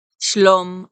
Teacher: is a construct SM form and so the vowel is um reduced to a schwa instead of being a kamat like it is in Shalom